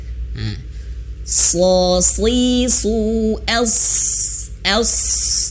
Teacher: Els bukan hanya sekedar as ya, karena dia memiliki sifat tebal ya, isti'la dan itbaq. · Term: huruf soda